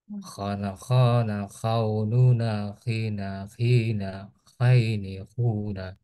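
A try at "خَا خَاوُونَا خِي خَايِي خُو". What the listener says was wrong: Nah, coba disempurnakan dulu huruf kho-nya. Ini apa namanya? Termasuk huruf yang tebal ya. Sehingga nanti bunyinya beda. Yang asalnya biasanya kita tadi baca a, bata, saja. Sekarang jadi kho. Jadi bunyinya o. Khoini. Khona, khonuna, khina, khoini, khuna.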